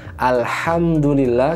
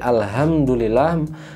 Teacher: Contohnya di surat Al-Fatihah, ketika kita baca Alhamdulillah, yang harusnya makhrajnya ada di tengah lidah, tengah tenggorokan, Alhamdulillah, ketika kita merubahnya jadi Alhamdulillah, pindah makhrajnya ke tenggorokan bawah